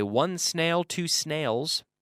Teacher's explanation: If you say 1 snail, 2 snails, I don't hear any because there's no vowel sound before the S